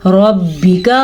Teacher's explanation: रॉ को पुर पढ़ना है क्योंकि रॉ के ऊपर ज़बर है